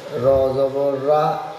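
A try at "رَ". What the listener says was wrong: র রটা মোটা হবে র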